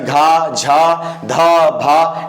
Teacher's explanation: वर्ण जिनकी अंतिम ध्वनि में हा होता है, हा की ध्वनि होती है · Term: महाप्राण